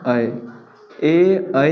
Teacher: ए ऐ का उच्चारण स्थान कंठ और तालु होता है